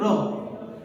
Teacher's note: तो इसको प्रकंपित व्यंजन भी कहते हैं। और जीभ हमारी थोड़ी सी मुड़ती भी है, इसलिए इसको लुंठित भी कहना गलत नहीं होगा।